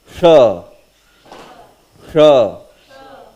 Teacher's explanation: this is pronounced by making your tongue in retroflex position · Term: second sha